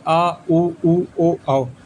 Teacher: पश्च स्वर, जिन स्वरों के उच्चारण में जीभ का पश्च भाग काम करता है, उसे हम पश्च स्वर कहते हैं, जैसे आ उ ओ औ।